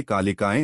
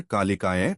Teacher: इसे कालिकाएं न बोलकर कालिकाय बोले य पर थोड़ा जोर दें